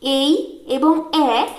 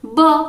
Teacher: যেমন উদাহরণ হিসেবে এ লেটারটির 2টি সাউন্ড এই এবং এ শুধুমাত্র ঠোঁটের আকার পরিবর্তনের মাধ্যমেই উচ্চারিত হচ্ছে। বাতাস কোথাও বাধা পাচ্ছে না বা কোনো ফ্রিকশন বা ঘর্ষণ অনুভূত হচ্ছে না। এগুলি বেশি সময় ধরে উচ্চারণ করা যায়। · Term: স্বরধ্বনি